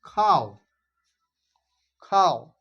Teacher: ও এর উচ্চারণ যেটা পূর্ণ হচ্ছে না অর্ধ হচ্ছে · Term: অর্ধ উচ্চারণ